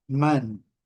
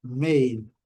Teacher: man, short, o A bem curto. Made, o A bem longo.